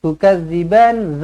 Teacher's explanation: tukadziban zal hujung lidah. Jangan kasar